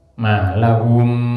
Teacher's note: Malahum, ada mim mati di situ ketemu mim, maka suaranya mim yang pertama dimasukkan ke suaranya mim yang kedua. Oleh karenanya di situ mim yang kedua ada tasdidnya. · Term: idgham mimi